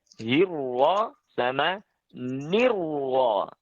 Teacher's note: Itu tebal semuanya roknya. Tidak ada yang tipis.